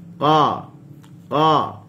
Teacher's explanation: pangkal lidah terangkat, tengah lidah tidak ada lekuk. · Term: huruf qaf